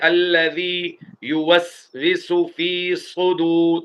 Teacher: سین اور صاد دونوں کو ایسے ہی پڑھنا ہے، ایک ہی طریقے سے، ایک ہی جگہ سے نکلیں گے، لیکن صاد کو یہاں موٹا کرنا ہے کیونکہ صاد سیٹی کی آواز والا حرف بھی ہے اور موٹے حروف میں بھی شامل ہے.